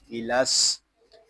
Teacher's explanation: سین حروف صفیریہ میں سے ہے، اس میں سیٹی کی آواز آئے گی